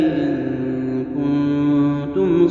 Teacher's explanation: ان کنتم میں یہاں دونوں جگہ پر اخفاء ہے، یعنی غنہ ہوگا